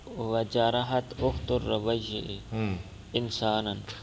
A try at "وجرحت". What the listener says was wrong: زخمی کیا ربیع کی بہن نے ایک انسان کو، جراحت پڑھ، خرجت نہیں، جراحت جراحت جراحت۔